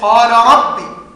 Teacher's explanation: الراء مع اللام قال ربي، الاثنين بيخرجان من طرف اللسان، والاثنين تقاربا في جميع الصفات. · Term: المتقاربان